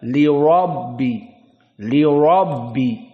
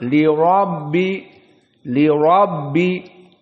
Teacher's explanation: Maka ra dalam keadaan tafkhim dibaca li rabbi.